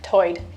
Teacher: Lumbee English speakers share vowel sounds present in the Outer Banks accent, where tide is pronounced toid